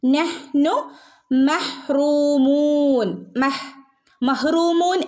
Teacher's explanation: നഹ്നു മെഹ്റൂമൂൻ രണ്ടിനും നഹ്നു ഹാഫ് സുക്കൂനെ കൊടുക്കാൻ പാടുള്ളൂട്ടോ നഹ്നു നഹ്നു എന്ന് ഓതരുത് നഹ്നു നഹ് നഹ് ഇത്രയും മതി നഹ്നു മഹ്റൂമൂൻ